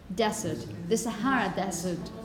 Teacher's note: this is the desert, with a voiced z sound, and the stress at the beginning of a word.